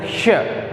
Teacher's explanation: जैसे अपने बोलते हैं ना श, क्योंकि वो संघर्षी व्यंजन है, उष्मा निकल रही है।